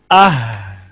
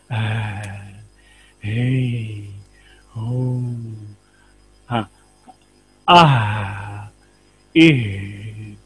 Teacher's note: ये आवाज जो पहले हरफ की आवाज है उसको छोड़ दें तो आप बाकी देखेंगे सांस ही जारी है, हल्की सी कमजोर सी आवाज आपको नजर आ रही है।